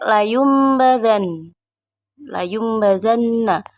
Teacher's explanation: gunnah musayyadah karena ada huruf nun yang bertasydid. Cara membacanya mendengung yang disangatkan.